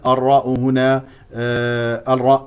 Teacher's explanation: الراء هنا مفتوحتان فاذا تكون مفخمه